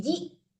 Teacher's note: ji ditekan ya, dipentokin mematikan hamzah ji, jangan jia, jangan ngambang kayak gitu ya Bu.